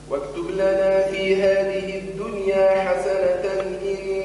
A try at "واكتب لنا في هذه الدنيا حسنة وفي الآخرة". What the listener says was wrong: لا ناقصة كلمة مرة أخرى